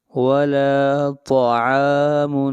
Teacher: ایک الف کے برابر، یہاں پر الف مدہ ہے، ولا طعام طا کو موٹا پڑھیں گے، طا حروف مستعلیہ میں سے ہے، ولا طعام عین کو کھینچ کر پڑھیں گے ایک الف کے